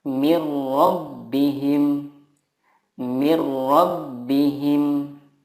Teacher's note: Idgham bila gunnah adalah nun sukun atau tanwin bertemu dengan lam atau ro. Cara membacanya meleburkan nun sukun ke huruf berikutnya tanpa gunnah.